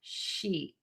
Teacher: So I always say, think about loving a sheet of paper so much that it makes you smile, because when you smile, your mouth will be nice and tense. The tip of your tongue will be really high and flat in the mouth. And then make that vowel really long. Sheet.